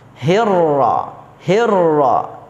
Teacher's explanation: terdapat hukum ro tafkhim dibaca tebal ro'nya